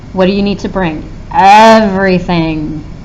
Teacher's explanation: we put a lot of emphasis on EV less on re and then thing